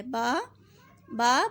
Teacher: الف، الف منہ کے خالی حصے سے ادا ہوتا ہے. با، با بند ہونٹوں کے گیلے حصے سے